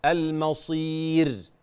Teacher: والراء عند الوقف في كلمه المصير تبقى رقيقه